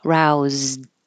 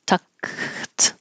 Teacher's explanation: So if your voice is on, leave it on, roused. If your voice is off, tucked, leave it off.